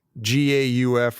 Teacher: they literally just left the L out